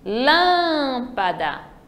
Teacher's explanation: já no lâmpada é a antepenúltima terceira sílaba Então ela é uma proparoxítona